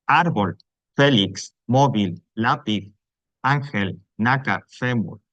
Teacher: las Llanas o graves en cambio son aquellas que en las que la sílaba tónica esa sílaba fuerte digamos es la penúltima